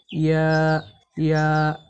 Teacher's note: এই ইয়া হরফকে জিহ্বার মাঝখান থেকে নরম করে পড়তে হয়